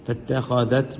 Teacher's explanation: دال پڑھتے ہوئے زبان نکلے گی